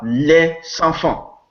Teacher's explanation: if you have a S in intervocalic position, it changes to Z, to Z. This is why we say liaison and not liaison, because the S of liaison is intervocalic, it is between two vowels.